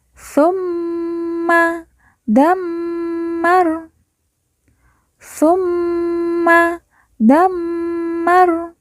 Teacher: setiap ada mim yang bertasdid maka cara bacanya kita tekan ditahan dan dua harakat